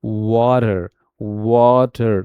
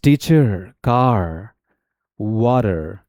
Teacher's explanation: when we talk about the American accent, the R is fully pronounced, curled and resonant. मतलब कि थोड़ा सा उसको लंबा खींचा जाता है जब आर का प्रोनाउंसिएशन होता है।